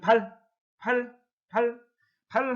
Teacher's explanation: 혀 끝이 윗 잇몸에 다 있어요.